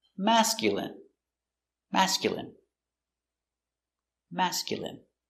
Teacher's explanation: Stress on the first syllable.